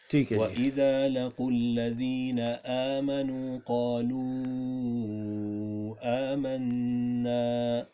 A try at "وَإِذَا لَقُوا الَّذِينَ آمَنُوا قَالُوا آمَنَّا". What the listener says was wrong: ادھر تھوڑا سا آپ نے کھینچا ہے.